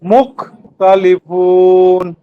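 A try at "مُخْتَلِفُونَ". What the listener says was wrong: খটা আরেকটু। মুখ মুখ।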